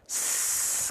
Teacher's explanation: Sin itu dia punya sifat hams. Tapi hamsnya bukan percikan nafas tapi sesuai dengan dasarnya yaitu mengalir nafas. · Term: huruf sin